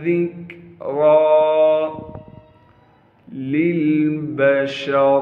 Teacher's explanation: वमा हिया इल्ला ज़िक्रा लिलबशर, लाम को दूसरे लाम से मिलाएंगे जो कि साकिन है। बा को बग़ैर खींचे पढ़ना है।